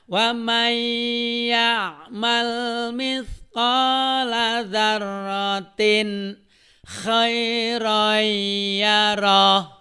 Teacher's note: Nah, wa may ya'mal itu kan aslinya waman ya'mal gitu. Kusabab nun ketemu iya, maka bunyi N-nya masuk seolah-olah di situ yang ada adalah huruf iya. Ya. Jadi dileburkan masuk ke dalam bunyi iya. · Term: idgham bi guna